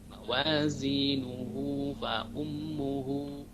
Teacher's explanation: hu yang pada lafaz mawazinuh itu juga dibaca mad silah qasirah, dibaca dua ketuk, mawazinuhu fa ummuhu, ya.